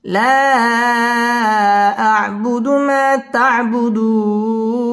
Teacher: মদের হরফের বামের হরফে ওয়াকফ মধ্যে আরজি 3 আলিফ টান দিয়ে এখানে ওয়াকফ করতে হবে।